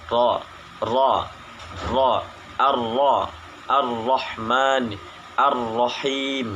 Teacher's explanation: satu kali getaran halus ujung lidah atau disebut juga dengan taqrir